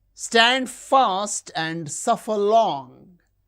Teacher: Stand fast, suffer long. These words are stressed.